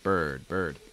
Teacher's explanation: that b sound is voiced so make sure that your throat is vibrating